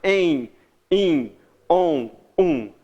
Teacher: É só um som de vogal que vai ser nasalizado, que vai ser jogado pelo nariz. · Em, o E, ele vai para o nariz. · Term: dígrafo vocálico